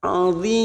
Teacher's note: Kita samakan dengan video sebelumnya. Mat arik lisukun kita panjangkan 4 harokat.